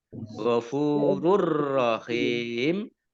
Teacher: dhammah tanwin bertemu dengan huruf ra, bacaan idgham bila gunnah. Idgham masuk bi dengan la tidak, gunnah mendengung.